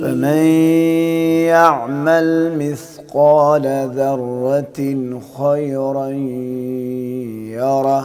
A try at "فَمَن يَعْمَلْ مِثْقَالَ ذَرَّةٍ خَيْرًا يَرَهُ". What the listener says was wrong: یعنی تھوڑا ٹھہر کے پڑھیے، جلدی نہ کیجیے.